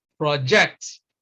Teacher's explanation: a noun we we stress the first syllable it becomes project if we want to use it as a verb then we stress the second syllable and it is pronounced project the same thing you have in